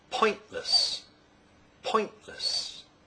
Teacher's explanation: It's pointless becomes it's pointless because the glottal stop replaces the t sound after the syllabic n, n. So point, pointless, pointless.